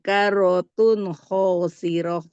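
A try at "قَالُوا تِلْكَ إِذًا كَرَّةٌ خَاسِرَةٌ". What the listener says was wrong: Nah, tilkanya jangan panjang, Bu. Qalu tilka idzan karratun khasiroh.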